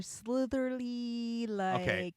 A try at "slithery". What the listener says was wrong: No, there's no ly at the end.